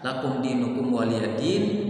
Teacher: Dinnya itu bisa 2, bisa 4, bisa 6 karena itu mad arid disukun